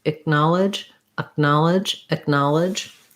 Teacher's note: So in acknowledge, the K is pronounced more as a stopped sound. So I don't say acknowledge, I don't release the air, but I also don't say G. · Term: stopped K